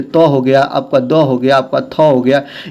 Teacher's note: जीवा को अगर आप दंत पर लगाएंगे, दांतों पर लगाएंगे तभी आप दंत ध्वनियों को बोल पाएंगे। जैसे त हो गया, आपका द हो गया, आपका थ हो गया, याद रखेंगे सभी दंत ध्वनियां हैं, इसको आप ध्यान देते रहेंगे।